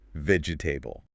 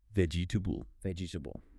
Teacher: vegetable >> Four syllables, but in natural English, we delete the middle E. It becomes three syllables. >> vegetable vegetable >> Much faster.